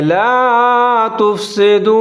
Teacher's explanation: واو کے اوپر ساکن ہے، اور اس کو تھوڑا سا لمبا پڑھیں گے · را سے پہلے الف کے اوپر زبر ہے تو را کو موٹا پڑھیں گے